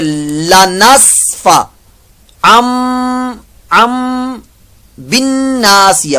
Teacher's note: نون ساکن کے بعد جب تنوین آتا ہے, نون ساکن کے بعد جب حرف با آتا ہے یا تنوین کے بعد آتا ہے, یہاں پر تنوین کے بعد ہے با, تو پھر ہم نون کو یا تنوین کو میم سے بدل دیتے ہیں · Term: اقلاب